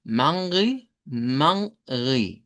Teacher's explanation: Nosotros la escribimos con una m, en portugués se escribe con una n y la pronunciación es con una a nasalizada